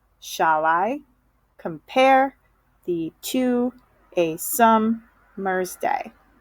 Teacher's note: When he writes these sonnets, every other syllable is stressed. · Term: iambic pentameter